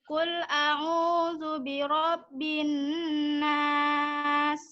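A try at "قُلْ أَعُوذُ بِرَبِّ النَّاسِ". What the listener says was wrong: Ya, Rabb banyak itu bertasdid. Qul a'udzu birabbin nas. Hanya saja tadi di huruf lam ya.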